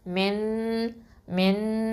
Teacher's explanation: அப்போ இங்கே என்ன பண்ணணும், எஹ்ஃபா சட்டம். இந்த நூனை வந்து ஹைட் பண்ணி, அதாவது மறைச்ச ஒன்றா செஞ்சு ஓதணும், ஆனால் ஹெவி ஒன்றா கொடுக்கணும்